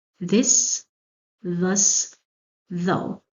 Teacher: the tip of the tongue shows between the teeth in all three words